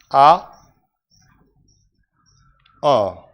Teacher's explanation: जीभ को नीचे तालू से दूर, और मुख द्वार पूरा खुला रहता है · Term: विभ्रत स्वर